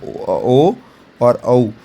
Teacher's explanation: तो ओ और औ ये कंठोष्ठ से इनका उच्चारण होता है। कंठोष्ठ मतलब कंठ प्लस ओष्ठ मिला के ये ओ और औ की ध्वनि निकलती है, और इसी को हम ओ दौ तो हो कंठोष्टम ऐसा कहते हैं।